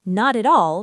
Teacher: listen for linking, consonant to vowel. Not at all becomes not at all.